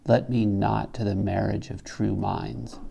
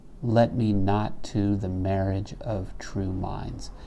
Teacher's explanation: Now if we read the entire line, you'll hear that the caesura is tertiary. In other words, it happens after the 3rd syllable. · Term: tertiary caesura